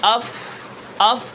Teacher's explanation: آواز نرم ہوگی اور آواز جاری رہے گی رخوت کی وجہ سے۔ اب اس کے بعد اس کے اندر دو صفات ہیں جو باریکی کی ہیں، استفال اور انفتاح۔